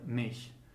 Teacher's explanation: the allophone sh occurs after front vowels. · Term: sh allophone